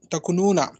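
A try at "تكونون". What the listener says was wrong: کو کو مدہ کرے مولانا تکونون تکونین, تکو کو ذرا لمبا کھینچے.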